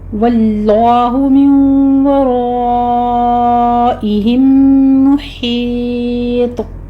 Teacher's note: واللہ میں لفظ جلالہ کو پر پڑھنا ہے. من ورائہم میں نون ساکن کا قاعدہ ادغام مع الغنہ ہے. یہاں پہ 2 کاؤنٹ کریں گے، یعنی 2 حرکتوں برابر یہاں پہ ہم نے ادغام مع الغنہ کرنا ہے.